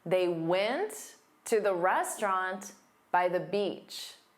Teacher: The content words are went, restaurant, beach. These are the words that you'll hear louder and longer.